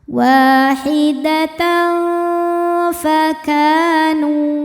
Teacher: Berikutnya ada ikhfa hakiki awsat karena ada tanwin fathah menghadapi huruf fa. Cara bacanya tanwin disamarkan ke fa disertai bunyi dengungan.